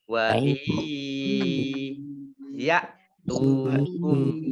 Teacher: nun sukun bertemu dengan huruf ya. Ini bacaan idgham bi gunnah ya. Idgham masuk bi dengan gunnah mendengung. Nah, di sini mendengung ya.